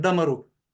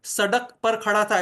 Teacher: जिह्वा का अग्रभाग है वो ऊपर उठकर हार्ड पैलेट को वहां पर टच करता है, रिट्रोफ्लेक्स जो हम कहते हैं, तो ऊपर स्पर्श करेगा तभी ये ध्वनियां हम उच्चारित कर पाएंगे। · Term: मूर्धन्य